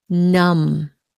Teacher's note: you don't pronounce the b